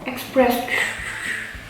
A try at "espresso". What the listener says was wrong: No, without X.